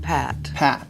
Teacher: where we're going to start i want you to think of the a sound which makes your lips feel very flat horizontal relaxed and the resonation of the vowel is in the front of your mouth so it's going to feel right here around your lips specifically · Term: the a in pat, ah in pat